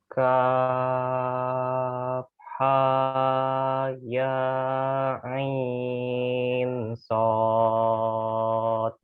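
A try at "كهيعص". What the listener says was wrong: Perlu diingat untuk pengucapan ha dan ya ini tidak usah terlalu panjang. Tidak usah terlalu panjang, posisikan dia itu 2 harokat. Ha, nah, ini pakai jari lah. Kalau misalnya bingung pakai jari. Nah, ha, nah itu ha. Kalau dia cuma 1 ha, sudah. Ha, 1 detik.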